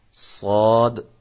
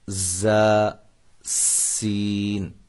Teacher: یہ دیکھیں، صاد، ز، سین، یہ تین حروف ادائیگی میں آپ محسوس کر رہے ہوں گے کہ ان تینوں حروف میں سیٹی کی آواز پیدا ہوتی ہے۔ اب فرق یہ ہے کہ صاد کی جو سیٹی ہے یہ موٹی ہوگی، زا اور سین ان کی سیٹیاں جو ہیں وہ سیٹی کی جو آواز ہے وہ باریک ہوگی۔ اب دیکھیں، یہ باریک سیٹی، یہ موٹی، صاد، ز، سین۔